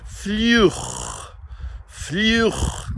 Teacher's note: U, going into a round sound. And then the CH, which is our guttural fricative sound at the back here. And we put those together, we get fluch.